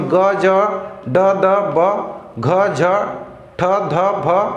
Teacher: घोष होता है, यानी कि इसके उच्चारण में क्या होता है, कंपन होता है, वाइब्रेशन होता है